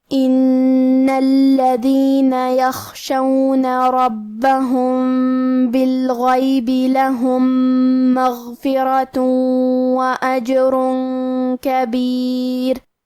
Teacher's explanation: کلمت یخشون میں حرف الخاء ہے اور خاء کی ادائیگی حلق کے اوپر والے حصے سے ہے، خاء حروف التفخیم میں سے ہے، لہذا ہمیں یہ حرف کو بھاری آواز میں پڑھنا ہے